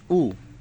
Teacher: এই দেখেন একটা টান দিয়ে উপরে পেশ দেওয়া হয়েছে। পেশের উচ্চারণের সময় আওয়াজ সামনের দিকে যায় এবং ঠোট মিলানোর কাছাকাছি হয়।